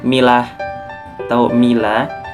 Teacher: Untuk selanjutnya di sini ada milah atau mila, yaitu idgham bigunah karena huruf ta berharakat domah tanwin bertemu dengan huruf nun bertasydid. Jadi dibacanya ini dengung karena dengung dan ditahan, maksudnya dengung dan ditahan sampai 3 harakat.